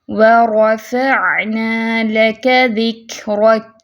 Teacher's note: عین کی آواز جو ہے واضح کرنی ہے، اور متوسطہ حرف ہے، درمیانی کیفیت میں آواز چلے گی، فوراً سے بند نہیں کرنی۔ وَرَفَعْنَا، نہ تو جھٹکا دینا ہے نہ ہی جلدی سے فوراً سے بند کرنی ہے، درمیانی کیفیت میں آواز کو رکھنا ہے۔